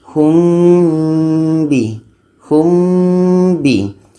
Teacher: dan kita baca dengung dua harakat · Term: ikhfa syafawi